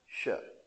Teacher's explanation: जीभ हमारी तालु को स्पर्श करती है इसके बोलने में, शय, आप इसके बोलने में आपकी सीटी भी बज सकती है इसको बोलने में, शय, शय, शय, शय, जीभ सबसे मधुर ध्वनि शय, इसको बोलने में आपकी सीटी भी बज सकती है इसलिए इसको कहते हैं तालव्य शय।